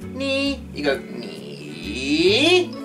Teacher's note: Make sure it starts off high, falls, and then comes back up again.